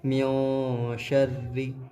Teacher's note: یہاں پر ناک میں آواز لے جا کر کے پڑھیں گے